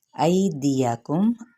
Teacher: ایدیکم، ای پہ یا لین کا قاعدہ ہے، کیونکہ یا ساکن سے پہلے اگر زبر آ جائے تو اسے یا لین کہتے ہیں، جس کو نرمی سے ادا کرنا ہوتا ہے۔ ایدیکم، ان کو جلدی سے ان حرکات کو پڑھیں گے۔